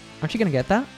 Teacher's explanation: morph into a sound so aren't you becomes aren't you then she uses the reduced form of going to which is gonna